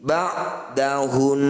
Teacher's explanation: Ketika dihentikan dengung tetap. Fathahnya tidak usah dibunyikan. ba'dahunna, ketika berhenti ba'dahun. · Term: gunnah musyaddadah